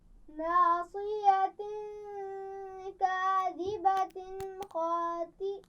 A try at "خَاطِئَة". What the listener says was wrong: توئی نہیں پڑھنا. خاطئہ.